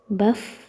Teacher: Bacakan huruf fa-nya, fa sukun, itu huruf fa-nya sesuai dengan makhraj yang sudah kita pelajari, yaitu ujung gigi seri atas menempel ke perut bibir bagian bawah